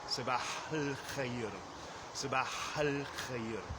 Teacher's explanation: I don't really pronounce the A in the definite article of al-khair. I just kind of go right in from the hard H in sabah, and then I pronounce the L sound, and then al-khair.